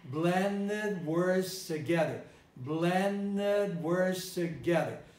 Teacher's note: blended at the end eliminated the d